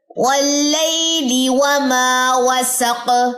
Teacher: لام کی زیر کو لمبا نہیں کرنا، واو کی زبر کو لمبا نہیں کرنا، میم کے اوپر الف مدہ کا قاعدہ ہے 2 سیکنڈ لمبا ہوگا، وما اس طرح، وسق قاف کی زبر گر جائے گی اور اس پہ آ جائے گی جزم جو سین کی زبر سے سپورٹ لے گی، وسق۔